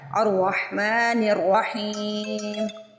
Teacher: جب میں نے یہاں پہ وصل کیا تو میں نے الف کو میوٹ کر دیا، الف کو نہیں پڑھا، نون کو ڈائریکٹ را سے ملا دیا، لیکن یہاں پہ جو حمزۃ الوصل سٹارٹنگ میں تھا وہاں پہ مجھے اعراب لگانا تھا۔